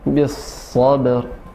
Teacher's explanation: Jangan terlalu cepat, jadi disempurnakan dulu aliran udara atau nafasnya huruf sa baru masuk ke ba dan ra